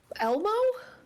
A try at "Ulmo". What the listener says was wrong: Almost. Replace the E with a U.